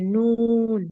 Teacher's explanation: আচ্ছা ঠিক আছে, তাহলে বলেন, বলেন হচ্ছে নুনের মাখরাজটা বলেন। নুন জিহ্বার আগা তার বরাবর উপরে তালুর সঙ্গে লাগিয়ে